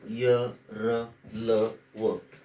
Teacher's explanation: यर लव यांच उच्चार स्थान हे स्पर्श व्यंजने आणि उष्मे यांच्या मधल आहे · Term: अंतस्थ